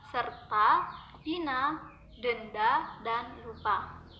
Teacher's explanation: Vokal A dilafalkan dengan cara menarik lidah ke belakang dan ke bawah disertai dengan menghembuskan udara keluar, sedangkan mulut dibuka lebar-lebar membundar. Ucapan vokal A akan pertama menjadi agak panjang apabila berada pada suku kata terbuka.